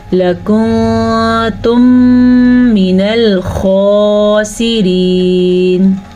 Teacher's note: ادغام شفوی، یہ ہم غننے کے ساتھ پڑھیں گے